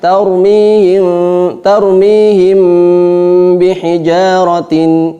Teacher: dengan menempelkan antara bibir atas dengan bibir bawah, itbaqus syafatain